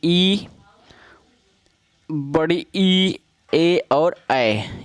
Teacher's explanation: अग्र स्वर जीभ के अगले भाग से ई, बड़ी ई, ए और ऐ ये 4 शब्द बोले जाते हैं।